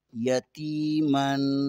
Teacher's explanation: میم دو زبر کے آگے فا حروف اخفا میں سے آتا ہے، یتیمن یہاں پر اخفا ہوگا